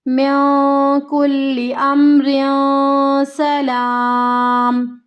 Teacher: یہاں پہ کیا ہوگا، پھر مد عارض کا قاعدہ ہوگا، وقف ہوگا تو 3 الف کی مقدار کے برابر کھینچ کے اس کو لمبا کرنا ہے ہمیں